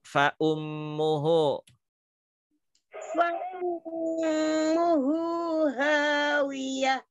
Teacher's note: bunyi F itu ya adalah makhrajnya pada ujung gigi seri atas bertemu dengan bibir bawah ya. Makhraj huruf fa itu bukan dua bibir yang merapat.